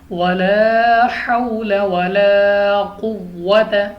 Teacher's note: واو ساکن سے پہلے زبر واو لین بغیر کھینچے بغیر جھٹکے دیے معروف پڑھنا ہے